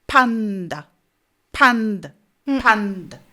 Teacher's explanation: vous avez une première syllabe qui est forte, une deuxième syllabe qui est faible.